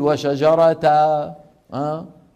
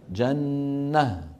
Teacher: لا يعوض عن تنوين النصب بالف اذا كان على هاء تانيث بل ها